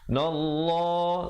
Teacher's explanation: lafzul jalalah dibacakan dengan tebal